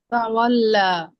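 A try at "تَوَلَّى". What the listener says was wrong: তাওয়াল্লা, লা বলে একালিফ টান দিতে হবে, যেহেতু এখানে খারা জবর আছে। তাওয়াল্লা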